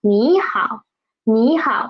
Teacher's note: there are two third tones together, third tone syllables together. So we will change the first third tone into second tone. Okay, 你好，你好, and the next 好 is a half third tone.